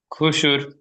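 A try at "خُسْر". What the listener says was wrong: জি, খুস বলে শেষে রটি যুক্ত হবে, খুসর, জি, এখানে এই রটিকে সাকিন করা হচ্ছে কেন?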